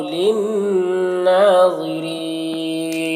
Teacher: للناظرین نون مشدد غنہ کے ساتھ پڑھیں گے، کھڑا زبر ایک الف کے برابر کھینچیں گے.